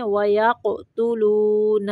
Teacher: قاف کو قلقلہ پڑھنا ہے